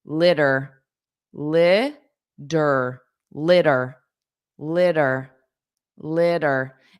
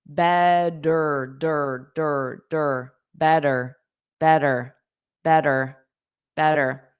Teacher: In American English, it's pronounced litter. Dur dur. Those two t's become a soft d.